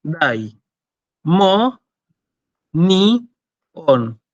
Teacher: Iota y omicron no forman diptongos, ¿sí? Estos no hacen diptongo, son dos sílabas distintas.